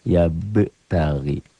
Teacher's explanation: mengedip-ngedip tuh ya. Ya be tari. Ba-nya jadi double bacanya. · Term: qalqalah sugro